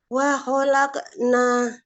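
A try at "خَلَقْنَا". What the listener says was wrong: Qafnya dipantulkannya bervokal oh ya. Khalaqo.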